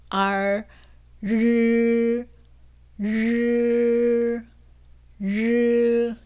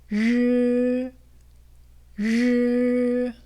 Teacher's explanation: R, 르, 르, 르. 네, 혀 끝이 말려 있는 그 부분이 아주 약하게 입천장에 붙었다 떨어지면서 그 사이로 바람이 빠져나가면서 소리가 나는 게 느껴지실 거예요. 이게 바로 권설음의 발음 방법이에요.